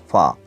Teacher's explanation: Pa is bilabial, pa is plosive, pa is voiceless sound.